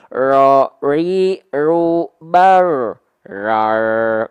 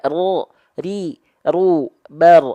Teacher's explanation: jangan sampai jadinya hilang getarannya jadi kayak orang bule